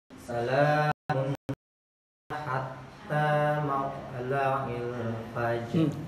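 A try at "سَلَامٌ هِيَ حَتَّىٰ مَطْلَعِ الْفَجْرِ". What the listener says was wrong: Qalqalahnya ragu-ragu. Ingat arahnya ke fathah kan ya? Arahnya ke jadi mauto. Salamun hiya hatta mauto.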